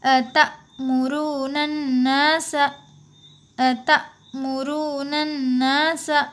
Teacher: हमें यहाँ पे थोड़ा झटके से पढ़ना होगा, हमज़ा साकिना के पढ़ने में झटका होता है